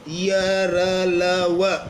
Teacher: ऐसा लगता है जैसे वायु थोड़ा रुक करके बाहर निकलती है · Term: अंतस्थ व्यंजन